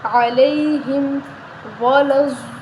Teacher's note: موٹا پڑھیں گے، علیہم ولا الضالین، ضاد کو موٹا پڑھیں گے، ضاد کے آگے الف پر بڑی مد ہے تو ہم اس کو 5 الف کے برابر لمبا کریں گے